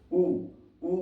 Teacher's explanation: उ कहोगे तो होठ जो है गोलाकार बन रहा है। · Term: ओष्ठ